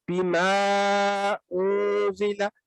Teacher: یہ ما جو ہے نا اس کو آپ نے لمبا کر کے ادا کرنا ہے کم از کم 4 سیکنڈ